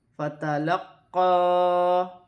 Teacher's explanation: قاف مشدد ہے، جماؤں کے ساتھ ادا کیا جائے گا